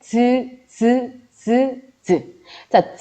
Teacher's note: 자, 즈, 자, 즈 발음할 때 우선 막았다가 즈 하는데 옆에다가 손을 대보시면 비벼서도 나죠. 그래서 얘는 파열과 마찰이 함께 묶여져 있는 파찰음이고요.